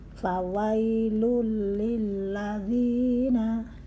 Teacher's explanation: Fawailul, tanwin bertemu lam, idgham bila gunnah, tidak mendengung